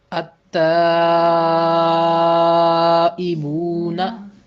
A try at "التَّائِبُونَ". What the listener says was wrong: اب مجھ سے سنیے، التائبون۔ اب اس میں ہوا کیا ہے کہ لام کی آواز بالکل نہیں آئی۔ کیوں نہیں آئی؟